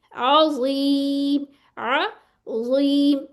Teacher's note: اس میں سیٹی نہیں ہے، مفخم ہے، موٹا پڑا جائے گا